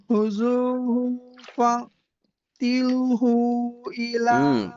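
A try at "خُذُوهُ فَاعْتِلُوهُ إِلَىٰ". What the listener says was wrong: Pendek. Tapi pendek dia tuh. Khuzuhu fa'tiluhu ila sawa'il jahim.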